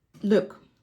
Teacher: You will likely notice that your tongue um moves slightly upwards on the L sound. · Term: soft consonants